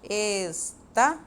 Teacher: A sílaba tônica é o tá. Estava. Ela também é a segunda, contando do final para trás, né?